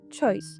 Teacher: Ми не говоримо че, не пом'якшуємо